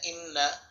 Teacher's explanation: নুনে তাসদীদ গুণা করতে হবে, গুণাটির নাম ওয়াজিব গুণা